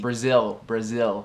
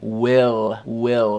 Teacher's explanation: claro que tem que puxar esse L, esse light L se chama na frente da boca